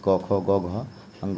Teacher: क का वर्ग है, कंठ से बोला जाता है। जैसे क, ख, ग, घ, अंग का उच्चारण करते हैं तो कंठ से इसका उच्चारण होता है, इसलिए इसको जो है क का वर्ग जितना भी है 5 ये कंठ स्वर है।